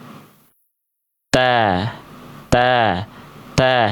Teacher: ujung lidah kita nempel ke gusi atau pangkal gigi dari atas kita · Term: Huruf ta